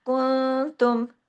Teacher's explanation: नून साकिन के बाद ता है ना, इख्फा हकीकी गुन्ना कामला